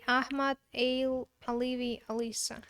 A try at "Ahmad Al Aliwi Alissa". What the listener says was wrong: it would have been perfect except for you say your W's as V's because you're a Russian. Russians say they're